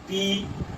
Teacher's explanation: हमारे यहाँ क्लोजर हो रहा है, हमारे दोनों होठ सट रहे हैं आपस में